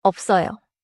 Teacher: Don't skip the closed lip sound.